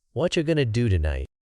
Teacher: Notice how are you becomes cha and going to is gonna. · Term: connected speech